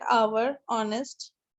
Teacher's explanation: now the words like our honest though begin with a consonant the initial consonant h is not pronounced that is it is silenced as a release their pronunciation begins with the vowel sound hence